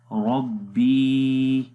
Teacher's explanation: بی کو لمبا کریں گے کیونکہ آگے یا مدہ ہے، یا کے اوپر جزم ہے اور اس سے پہلے زیر ہے اس وجہ سے ربی، ایک سیکنڈ لمبا کریں گے۔